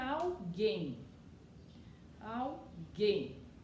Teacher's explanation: a última sílaba é mais forte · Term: oxítona